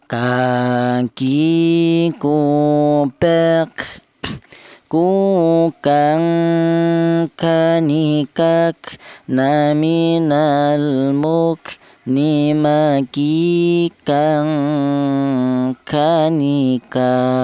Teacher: Huruf kaf ini keluarnya huruf berasal dari pangkal lidah